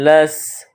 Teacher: اور سین کی ادائیگی میں سیٹی کی آواز پیدا کریں گے